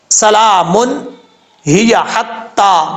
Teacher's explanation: سین بریک پڑھا جائے گا، سیٹی کے ساتھ پڑھا جائے گا، حروف صفیریہ میں سے ہے